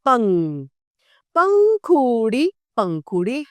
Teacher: अब अगला है चंद्रबिंदु जो इस तरीके से किसी व्यंजन के ऊपर लगाया जाता है जिसको उच्चारण में कंठ और नासिका दोनों का प्रयोग किया जाता है। जैसे पंख के ऊपर अ की मात्रा लगाई तो बन जाएगा पंख।